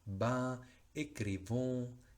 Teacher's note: terminan con S ambas, pero no suena la S